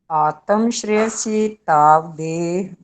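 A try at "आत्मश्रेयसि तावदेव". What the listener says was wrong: आत्म नहीं बोलना, आत्म आधा है ना।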